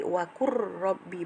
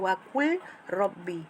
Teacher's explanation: Okey, wa qur, selalunya kita bunyikan wakul kan, wakul rabbi, tapi oleh kerana hukum bacaannya adalah hukum idgham mutaqaribain, bertemu dua huruf yang berhampiran sama mahraj sifatnya antara lam dengan ra, jadinya huruf ra tu dimasukkan ke dalam huruf lam, jadi wakur rabbi, bukan wakul rabbi.